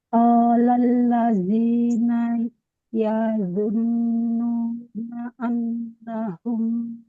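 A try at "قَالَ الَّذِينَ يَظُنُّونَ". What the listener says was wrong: Alifnya enggak ada, enggak boleh panjang. Jadi, fathah itu panjang kalau ketemu alif.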